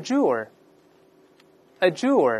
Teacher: 这个就没有失去爆破了，因为▁d▁和▁j▁放在一块一块发▁j▁这个声音